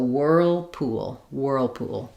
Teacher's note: as I move from the rounded ooh to the dark dark uh ooh ooh we just naturally link those two with a rounded glide of a w sound · main stress on whirl, whirlpool, but enough length and clear vowel on pool to get all of those sounds that are happening.